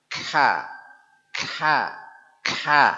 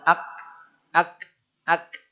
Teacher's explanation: Kaf yang salah terlalu banyak desah Kha sehingga seperti dua huruf ka dan ha